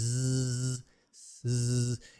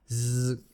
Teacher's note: I mean, natural, real English, like media. Z is just an S, and then you add the vibration, the voicing, z.